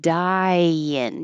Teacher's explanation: your tongue goes very high for I die so when you slide down for in it will make a Yin